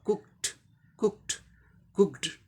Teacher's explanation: ऊ जैसे, क ऊ, फिर के का क, कुक हो गया, क साउंड वॉइसलेस है, इसलिए ईडी का टी होगा